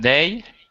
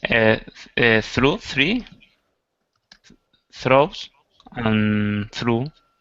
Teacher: you think they has a voiced TH sound and all the others are voiceless